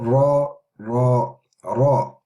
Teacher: it's not the gum, it's actually the palate that we're using to pronounce the Ra